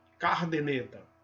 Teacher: E o cara traz, algumas pessoas pronunciam esse R trazido para a primeira sílaba